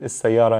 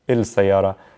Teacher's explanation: But like I said, some letters like the sun letters, like the S in this case, we skip the L sound from the il, okay? And we double down on the first letter, which is the sun letter